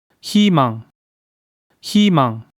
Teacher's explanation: when vowel 의(eui) is combined with other consonant than ㅇ, the vowel makes 이(yi) sound as well. This word means hope, and vowel 의 is combined with consonant ㅎ, which has ‘h’ sound.